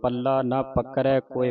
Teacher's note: ਇਹਨੂੰ ਪਲਾ ਨਹੀਂ ਕਹਿਣਾ ਪੱਲਾ ਅਦਕ ਲਾ ਕੇ ਬੋਲਣਾ ਕੱਸ ਕੇ ਬੋਲਣਾ